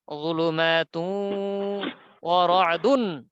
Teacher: তু, তা ওয়াও দুই পেশ, তু, যুলুমাতুন। নাকে বাজিয়ে গুনগুন করে গুন্নার সাথে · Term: ইদগামে বাগুন্না